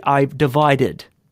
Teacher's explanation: we're doing the extra stress on the Ed simply because we already had a D sound in there so we we need to make sure that it's heard otherwise